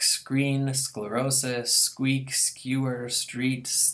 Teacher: all of these have super complex three consonant clusters in the beginning of the syllable